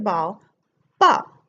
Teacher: And it has that bilabial B sound. So again, less motor control to make that sound.